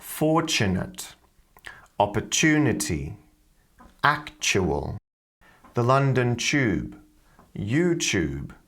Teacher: she's pronouncing the TU sound as a ch sound